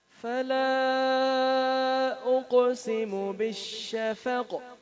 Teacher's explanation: فلا میں مد ہے، اس کو لمبا کرنا ہے، اور اقسم اس میں قلقلہ کرنا ہے. بالشفق میں آخر پر قاف وقف کی صورت میں ساکن ہوگا، اس پر بھی قلقلہ کرنا ہے، یعنی آواز کو ہلانا ہے